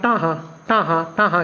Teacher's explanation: ਉਲਟਜੀਬੀ ਧੁਨੀਆਂ ਦਾ ਉਚਾਰਨ ਮਤਲਬ ਕਿ ਵਧੇਰੇ ਹ